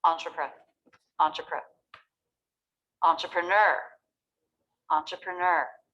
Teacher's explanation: The stress pattern is da-da-da-da. The last syllable is the loudest and most clear. The first 3 can be simplified a little bit. · This word is 4 syllables with stress on the last syllable. A lot of words in English with last syllable stress come from French, just like this word.